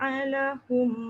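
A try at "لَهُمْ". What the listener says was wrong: Alahum. Tekan kuat sangat jadi ain pula.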